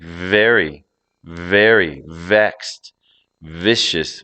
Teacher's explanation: in your throat as you're voicing let air flow out steadily you should feel the vibration on your lip from the voiced air passing through · the V sound is voiced and frictional, meaning it relies on a steady flow of air and vibration of the vocal cords. It's similar to the F sound, except that the F is voiceless.